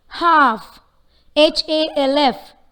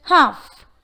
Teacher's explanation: So there is no L sound in this word. It's just half.